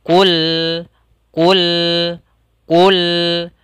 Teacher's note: ujung lidah kita angkat atau dari sisi bawah ujung lidah kita itu kita tempelkan di langit-langit atas sehingga lamnya tidak terpantulkan